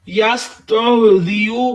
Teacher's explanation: سین کو سیٹی کی آواز دیں